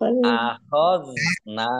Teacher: Dal sukun bukan kolkolah, jangan dipantulkan. Jangan dibaca akhadna.